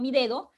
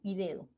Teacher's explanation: Ya no hay esa obstrucción y salida abrupta del aire, sino más bien un arrastre, ¿no? Del aire en la pronunciación de este alófono. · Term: fricativa